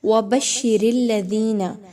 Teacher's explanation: را کے نیچے زیر ہے تو آپ نے اس را کو باریک پڑھنا ہوگا، موٹا نہیں پڑھنا